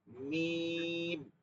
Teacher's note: মিম হচ্ছে এই দুই ঠোঁটের শুকনো জায়গায় সামনের দিকে